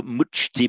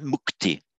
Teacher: a ch followed by a t, it morphs into a k